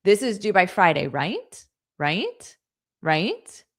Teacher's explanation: So, there has to be a questioning tone with Right. · So you state it as a statement, but then you add right. And because you add right with a rising intonation, I know that you want me to confirm